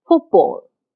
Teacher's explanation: The last sound of foot, t, is a voiceless sound. It doesn't have any voicing. And the first sound of ball, b, is a voice sound.